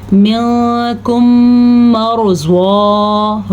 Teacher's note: را کو ساکن اور پہلے حرف کے اوپر زبر ہونے کی وجہ سے را کو ہم پر پڑھیں گے